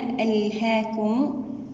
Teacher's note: في الآية الأولى ألهاكم، هنا أولا نحقق الهمزة في بداية الكلمة ونأتي ببينية اللام الساكنة